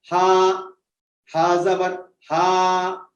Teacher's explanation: جیسے ہی ہا کہا آپ نے ہوا حلق کے نچلے حصے سے خارج ہو کر کے نکلتی ہیں